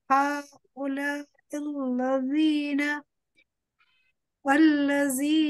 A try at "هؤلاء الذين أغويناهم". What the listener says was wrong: Don't pronounce the الذين thickly. Pronounce thinly. هؤلاء الذين أغوينا.